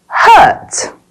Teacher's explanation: your lips are a little bit forward can you see that this is a long sound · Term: er sound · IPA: /ɜ:/